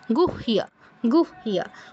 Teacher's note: এই ক্ষেত্রে হ আগে উচ্চারণ হবে, ইয় আগে উচ্চারণ হবে না, অর্থাৎ গুইহ বলবো না, গুহিয়া, গুহিয়া।